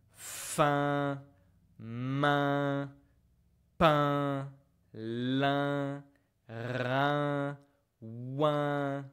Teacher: It's like a nose vowel because when you pronounce it correctly, you can actually feel like the small bones in your nose vibrating. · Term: voyelle nasal